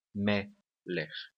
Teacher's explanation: Se não for, nós teremos um, como por exemplo na palavra meler, olha só, a palavra meler, nós teremos esse acentozinho aqui, tá vendo? A tonicidade da palavra meler está na primeira sílaba · A tonicidade da palavra melech está na primeira sílaba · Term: sílaba tônica